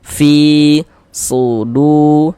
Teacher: Jadi kalau ada huruf ya sukun sebelah sininya nih ada harakat kasrah nih. Maka huruf yang memiliki harakat kasrahnya ini kita baca panjang. Mad thobbi'i panjang dua harakat.